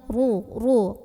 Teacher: kemudian roknya ini dibunyikan secara tafkhim karena rohnya barisnya di atas maka bacanya tebal pangkal lidah kita angkat